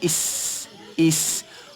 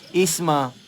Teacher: Huruf sin ni dia ada sifat as-safir, dia bersiul.